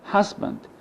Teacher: the first syllable is stressed, but the second stress, which contains the schwa sound, it's not stressed, it's unstressed. لو بصينا على كلمة husband بنلاقي المقطع الأولاني عليه نبر، أما المقطع الثاني اللي موجودة فيه شوا ما عليهوش نبر، ولذلك الشوا بنقوله is never stressed، لا يمكن إنها يحصل عليها نبر. · As you see, the first syllable is stressed, but the second stress, which contains the schwa sound, it's not stressed, it's unstressed.